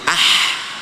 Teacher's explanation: ah, bunyi terakhir berada di tengah tenggorokan. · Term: ha